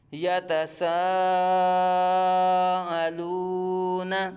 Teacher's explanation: حروف مدہ کے بعد حمزہ اسی کلمے میں آ رہی ہے تو مد متصل ہو رہا ہے